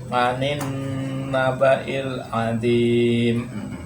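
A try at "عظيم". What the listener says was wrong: Azim. Zim. Jangan adim. Lidahnya digigit. Terus tengahnya kan cekung tuh. Ditabrakin langit-langit.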